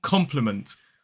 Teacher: three syllables the stress falls on the first so that first syllable is then we have a short I